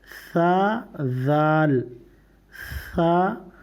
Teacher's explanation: اس میں سا بولنے میں دانت اور زبان کے نیچے سے ہلکی سی ہوا نکلے گی۔